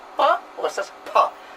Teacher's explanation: The first column represents the sound pa. The second column represents the same sound pa with some extra puff of air, the aspiration. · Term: aspirated sound